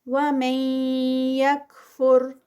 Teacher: یہ ادغام جو یا کے ساتھ ہوتا ہے ود غنہ ہوتا ہے